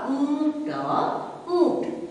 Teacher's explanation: सो जो आवाज होती है प्रोनाउंसिएशन जब करते हैं तो उसमें थोड़ा सा आपका नाक से उसकी आवाज निकलती है, नेजल वॉइस भी है